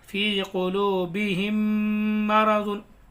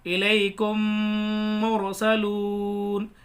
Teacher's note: मीम साकिन के बाद मीम आए तो मीम को मीम से मिलाकर, इस मीम को मीम से मिलाकर कैसे, फी क़ुलूबिहिम मरज़ुन, यानी दोनों मीमों को मिला के गुन्ना करेंगे। तो मीम को मीम से मिलाकर गुन्ना के साथ पढ़ा जाएगा। कैसे, इलैकुम मुरसलून, इस मीम को इस मीम में मिला के गुन्ना के साथ पढ़ेंगे। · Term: इदगाम शफ़वी